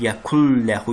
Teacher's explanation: Yazılışda yekun ləhudur, amma oxunuşda yekul oxunmalıdır. Yəni burda idğam qaydası baş verir.